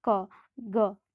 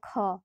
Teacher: तो ख में ज़्यादा मात्रा में वायु बाहर निकल रहा है, तो ज़्यादा मात्रा में जब हवा बाहर निकल रहा है तो वो महाप्राण व्यंजन हो जाएगा, ठीक है।